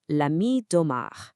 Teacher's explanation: Now, because the word ami starts with an A, and the name Omar starts with an O, both vowels, right? La and de both undergo elision, so it flows beautifully into one continuous sound